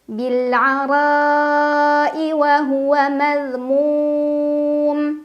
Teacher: Bil'ara'i wa huwa madhmum, mum mad arid li sukun karena ada mad tabi'i yang bertemu dengan huruf yang disukunkan karena waqaf. Dibaca panjang bisa 2, 4 atau 6 harokat